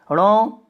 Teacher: ये मूर्धा और नासिका में मिलता है